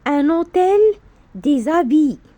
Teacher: le mot qui commence par h mué accepte la liaison